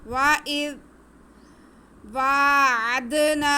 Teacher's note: حمزہ کا زیر ہم زال کے ساتھ ملائیں گے، لیکن زال کو ہم بہت نرمی سے، بہت پیار سے پڑھیں گے۔ اس میں سٹی کی آواز بالکل بھی نہیں آئے گی۔ وَإِذْ وَاعَدْنَا، واو پہ کھڑا زبر ہے، اس لیے اسے ہم ایک الف کے برابر کھینچیں گے۔ · واو پہ کھڑا زبر ہے، اس لیے اسے ہم ایک الف کے برابر کھینچیں گے۔ اس کے بعد عین پہ زبر ہے اور دال ساکن ہے۔